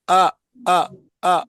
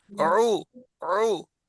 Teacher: عو عو یعنی جیسے کہ گھوم کے ہے آواز، گلے کے بیچ میں گھوم کے آواز ہے، وہ عین کی ہے اور نرم ہے. حمزے میں جھٹکا ہے، عین میں جھٹکا نہیں ہے